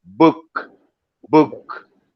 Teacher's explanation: B, you see the bilabial sound.